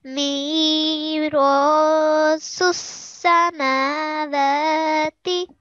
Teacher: because there is an alif madhe, we will be prolonging the ro for 2 seconds